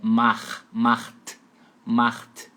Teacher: é um pouco rasgada como se fosse RR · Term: meio rasgadinho